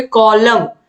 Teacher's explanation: एन का उच्चारण नहीं हो रहा है, तो कॉलम में यन छूट रहा है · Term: साइलेंट